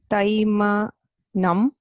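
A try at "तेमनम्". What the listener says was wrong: Temanam, not Tai.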